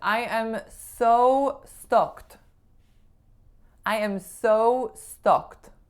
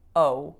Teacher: I needed to round my O vowel more.